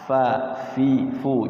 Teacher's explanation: nah Fa Ini dia ada anginnya Fa jangan Pa